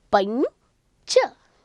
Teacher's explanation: You are pronouncing ya between. You are not saying pamcha.